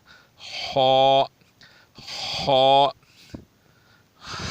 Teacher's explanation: ایک یہ ہے کہ ہونٹوں کو گول کر کے خا ادا کرنا، یہ صحیح نہیں ہے، ہونٹوں کو گول نہیں کیا جاتا، بلکہ ہونٹوں کو کھلا رکھ کر زبان کی جو درمیان والا حصہ ہے اس کو اوپر کیا جاتا ہے، تو یہ صحیح ادا ہوتا ہے، جیسے خا، خا، خا نہیں، خا موٹا۔